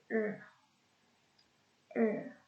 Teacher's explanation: the tongue tip is curled backward in the mouth. In retrograde, approximant is er.